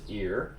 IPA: ɪr